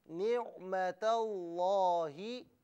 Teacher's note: یاد رکھیں کہ نعمتہ اور لفظ اللہ یہ علیحدہ علیحدہ کلمات ہیں, لیکن انہیں ملا کر پڑھا جا رہا ہے. ملا کر پڑھنے کی صورت میں نعمتہ میں تا کو لفظ اللہ کی لام کے ساتھ ملائیں گے, حمزہ کو نہیں پڑھا جائے گا. لیکن نہ ملانے کی صورت میں اسے لفظ اللہ پڑھا جائے گا, یعنی حمزہ پر زبر ہوگا.